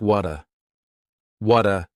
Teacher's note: that T at the end of the word what is going to change to a D sound · the word what is going to change to a D sound this is really typical of American English where a t that's surrounded by vowel sounds is going to change to a d it's called a flapped t and it just